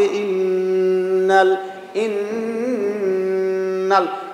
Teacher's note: নাকের ভিতরে গুন্না হবে কারণ এটা নুনের উপর তাজদিদ